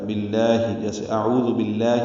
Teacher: باللہ میں لام اسم جلالہ زیر کی وجہ سے باریک پڑھا جائے گا